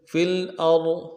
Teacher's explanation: حمزہ کو را کے ساتھ ملانا ہے، را کو موٹا کریں گے